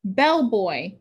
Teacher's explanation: in the final word we have diphthong o boy bell boy first word is accented usually in compound words